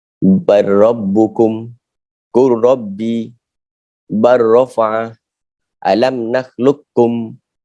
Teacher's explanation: Saling bertemu, maka cara bacaannya hendaklah diidghamkan huruf pertama ke dalam huruf kedua secara sempurna tanpa didengungkan.